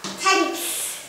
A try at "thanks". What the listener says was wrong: Lại đọc thanh rồi, bố vụt cho bây giờ. Chữ đấy viết như thế nào, đọc như thế dễ, như thế mà con phát âm được à? Vừa mới học xong, trên bảng chưa còn xóa kìa. Nhìn phiên âm đọc đi xem nào. Con nhìn phiên âm con đọc đi.